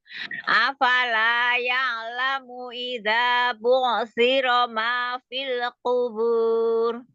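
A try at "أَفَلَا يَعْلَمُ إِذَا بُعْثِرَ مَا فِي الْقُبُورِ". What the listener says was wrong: Fil jangan dilepas dulu. Jangan jangan buru-buru dilepas ujung lidahnya.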